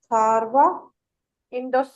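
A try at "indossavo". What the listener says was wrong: इंदोसावो। सारवी नहीं आएगा, आर नहीं बोला जाना ना, इंदोसावो।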